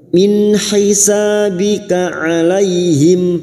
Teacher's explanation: Wa ma min nun sukun bertemu ha idhar halqi. Nun sukun dibaca jelas tanpa mendengung.